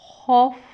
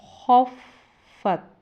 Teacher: خ پڑی زبر فا ساکن خوف، فا پڑی زبر تا ساکن فت، خوف فت۔ خ کو پر پڑھیں گے یعنی موٹی آواز کے ساتھ ادا کریں گے